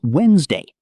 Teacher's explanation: A lot of people say Wed-nes-day, but native speakers usually say Wednesday. The D in the middle just disappears.